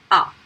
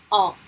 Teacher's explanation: if you say on, the air comes through nose and mouth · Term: voyelle nasale